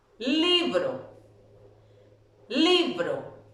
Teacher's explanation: ¿Dónde está la sílaba tónica? En li.